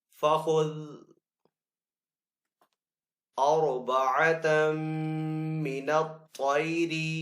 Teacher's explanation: را ساکن ہے لیکن پہلے والے حرف کے اوپر زبر ہے تو را کو یہاں پہ پر پڑیں گے